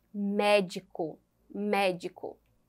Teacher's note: a sílaba tônica é a antepenúltima · Aqui nós temos proparoxítonas já que nós temos a antepenúltima sílaba com sendo a mais forte